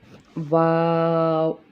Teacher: उसके बाद हर्फ है वाव, ये भी हरूफ शफिया में से है, यानी कि होंठों से अदा करने वाला हर्फ है। इसको अदा करते हैं तो होंठ अंदर की तरफ गोल हो जाते हैं, यानी कि दोनों होंठों की गोलाई से ये हर्फ अदा होगा।